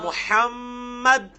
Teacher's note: اب یہاں پہ رکیں گے تو محمد کر کے دال پہ قلقلہ ہو جائے گا